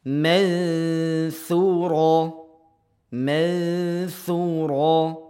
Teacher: nun mati diarahkan ke huruf tsa dengungannya diarahkan ke huruf tsa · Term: ikhfa